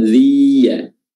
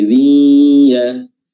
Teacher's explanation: Dengung itu makhrajnya adalah al-khayshum, yaitu pangkal hidung atau rongga hidung. Jadi selain dia dimasukkan idgham, dia juga ada suara yang keluar dari hidung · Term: idgham bi gunnah